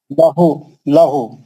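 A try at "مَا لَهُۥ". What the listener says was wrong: लहू नहीं, लहू जबर नहीं है भाई, पेश है, पेश। माँ लूहू, माँ लू दो लोटों से पढ़ो।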